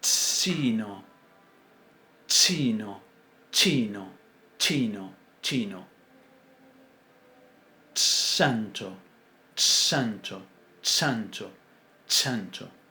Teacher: Primero cerramos completamente el conducto vocal, pero cuando lo abrimos sacando el aire por un lugar estrecho. que le da un sonido particular. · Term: africadas